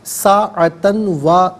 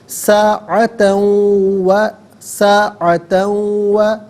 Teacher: لا یستاخرون ساعتاً ولا یستقدمون ساعتاً میں تا پر 2 زبر کی تنوین ہے، تنوین کو واو کے ساتھ ملا کر واو کی آواز کو غننے کے ساتھ ادا کریں گے